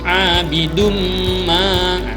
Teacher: Memasukkan dengan dengung atau dengung ya. Abidum sampai terasa dengungnya di hidung ya. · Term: idgham bi guna